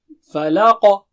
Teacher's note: برب الفلق، جب رکیں گے قاف پر تو قلقلہ کریں گے آپ، فلق نہیں بولیں گے، فلق ایکسٹرا ساؤنڈ آئے گا، اور قاف جو ہے اونچا موٹا ہے، رائٹ، استعلا والا حرف ہے، بہت زیادہ اونچا موٹا نہیں۔